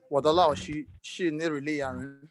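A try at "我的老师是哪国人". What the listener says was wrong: Okay, your tones, okay? 我的老师的老师 you didn't get it very well.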